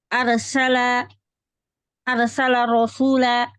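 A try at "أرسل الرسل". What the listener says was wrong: Ra'nya kedua-duanya dhammah.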